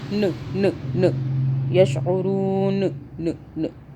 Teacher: ہم نے نون کو ساکن کر دیا جب ہم یہاں پہ رکے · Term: نون ساکن